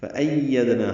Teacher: فَأَيَّدْنَا، حمزہ کو یا سے ملانا ہے، یا کو دال سے ملانا ہے، دال ساکن پہ قلقلہ ہے